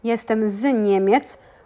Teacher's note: we do a phonetic liaison of the Z with the next words.